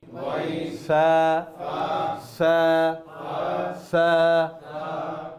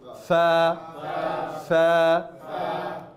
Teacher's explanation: তাই ত য আইন গাইন ফা ফা ফা, দুই ঠোঁটটা না, উপরের দাঁত নিচের ঠোঁট